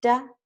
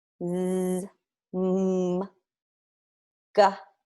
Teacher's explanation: like duh right that has voice when I say mmm-hmm gah all of those are voiced sounds because you can hear me produce voice when I make the sound